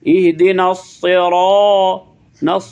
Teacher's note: صاد تھوڑا سا پور کر کے ادا کرنا ہے، را کو بھی پور